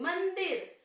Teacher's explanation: मंदिर तो हवा सिर्फ हमारे नाक से निकलती है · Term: अनुस्वार